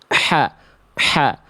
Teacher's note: Karena H kecil yang Bunda lafalkan tadi berarti belum duduk pada makhrajnya. H kecil dilafalkan dari tengah tenggorokan ya. Yang Bunda lafalkan tadi belum di sini.